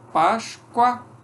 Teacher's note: Quando o O é pronunciado como U, ele é semivogal